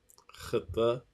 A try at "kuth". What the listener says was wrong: It's not a katha. Drop the A. Put it together. Kuth. Kuth. Kuth.